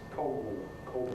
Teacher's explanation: And his name, in fact, exemplifies one of the characteristics of estuary pronunciation, namely that dark L changes into a vowel sound. So rather than Coggle, his name is Coggle, Coggle, at the end.